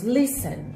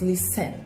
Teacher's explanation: A gente abre duas vezes a boca para falar listen. E a sílaba tônica dele é a primeira. Então, nós dizemos listen, nós não dizemos listen.